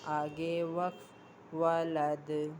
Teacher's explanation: دال حروف قلقلہ میں سے وقف کی صورت میں دال ساکن ہو جائے گا، اس لیے یہاں پر قلقلہ ہوگا